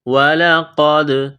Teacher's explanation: قاف کو موٹا کرنا ہے، دال کے ساتھ ملانا ہے، دال ساکن ہے تو یہاں پر قلقلہ کریں گے